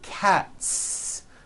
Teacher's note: again the s ending is unvoiced